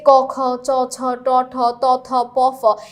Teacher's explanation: প্রথম দুই সারি সবাই হচ্ছে অঘোষ আর পরের তিন সারির সবাই হচ্ছে ঘোষ তার মানে নাসিক্য সর্বদা ঘোষের মধ্যেই পড়বে আর এই পাশ হচ্ছে উচ্চারণের স্থান আপাতত যেহেতু আমাদের টাইপ ওয়ান হচ্ছে ঘোষ অঘোষ নিয়ে আমরা ঘোষ অঘোষটুকু মনে রাখলেই হবে।